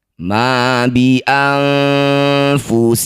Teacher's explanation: Ala qaumin hatta yughayyiru ma bi anfusihim, nun sukun bertemu fa disebut bacaan namanya ikhfa awsat. Bunyi nun dengungkan 2 harokat, saat dengung lisan kita sudah bersiap bunyikan fa.